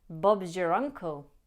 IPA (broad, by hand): bɒbzjər ˈʌŋkl